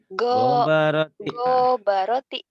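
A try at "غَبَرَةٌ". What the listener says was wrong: enggak ada yang panjang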